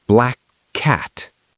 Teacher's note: You don't release the first K. You hold it. · So, it's one long k sound. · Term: gemination